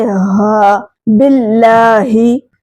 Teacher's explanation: ह को हलक के आखिर वाले हिस्से से अदा करें